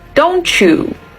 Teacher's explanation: In connected speech, you would say don't you. So the sound t combines with the sound y to make the sound ch. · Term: reciprocal assimilation